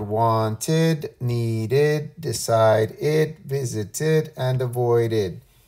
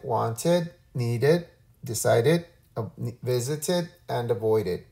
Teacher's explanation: the sound that we say when a verb ends in a t or a D sound is id